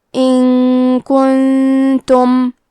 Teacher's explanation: اخفاء کا معنی ہے چھپا دینا، تو ہم نون ساکن کو چھپاتے ہوئے اور غنہ کے ساتھ یہ حکم کو ادا کریں گے